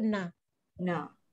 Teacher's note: Can you feel the vibration in your nose already? It's louder than you say da. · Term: dengung